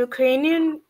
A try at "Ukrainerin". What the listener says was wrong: Ukrainerin, Ukrainerin, Ukraina, Ukraina. It's not you, it's u. Ukraina.